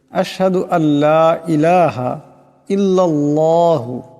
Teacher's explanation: হামজা এই লামকে ধরবে আশহাদু আল্লা ইলাহা ইল্লাল্লাহু এখানে এই লাম এই আল্লাহ লাম কে ধরবে আওয়াজটাকে মোটা করে পড়তে হবে